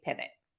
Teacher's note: not saying the letter vowel as it is written, but instead just kind of saying it short and quick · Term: schwa